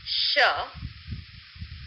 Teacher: As is evident, the airflow is continuous. There is no blockage anywhere. · For example, while pronouncing the sound sh, there is restriction of the airstream, but there is no complete blockage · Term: continuants